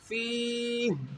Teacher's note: جب یہاں سٹاپ کریں گے فیہ پڑھیں گے، اس ہا کو ساکن کریں گے